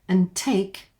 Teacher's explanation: And take off that D. And take, because it's followed by another consonant.